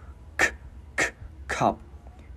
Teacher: Chữ K mình bật cổ gắn vào